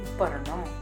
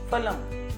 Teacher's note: प वर्ग के वर्णों का उच्चारण होठों की मदद से होता है। इसलिए इनको ओष्ठ्याह कहते हैं।